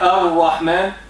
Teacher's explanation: Two things happen. Number one, the lam disappears. The lam disappears. Okay? Number two, the letter after lam will have shadda. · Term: injection